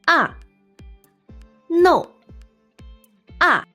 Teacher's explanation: make sure you start high enough and go all the way down